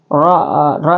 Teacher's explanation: RO di sini tebal dia tafhin